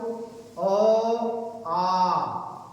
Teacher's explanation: अ और आ, ये 2 तरह का जो हमारा स्वर है अ और आ, ये हमारा कंठ से बोले जाते हैं। कंठ माने होता है गला।